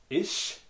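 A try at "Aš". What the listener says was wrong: First letter like A.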